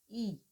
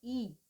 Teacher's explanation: जिन स्वरों का उच्चारण तालु से होता है उन्हें क्या कहेंगे, तालव्य स्वर कहते हैं। ये स्वर जो है मुख्यतः ई, ई बोल के देखिए, अगर ई तालु में हमारी जीभ स्पर्श कर रही है तो ये तालव्य स्वर है।